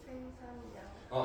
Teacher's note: 얘가 둘 다 리을로 바뀌는 유음화가 일어나는 게 아니라 생산량이라고 둘 다 니은 니은이 되는 모습을 보였단 말이죠. 그래서 얘는 예외야. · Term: 리을의 비음화